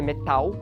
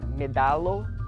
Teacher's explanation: essa consoante intervocálica que no latim é surdo mas que se torna sonoro